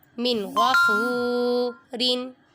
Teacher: نون پہ اظہار ہو رہا ہے کیونکہ نون ساکن کے بعد غائن حروف ہلکی میں سے آ رہا ہے، ادھر غنہ نہیں کریں گے۔ فا پہ واو مدہ ہو رہا ہے کیونکہ واو ساکن سے پہلے پیش ہے، اور را منون۔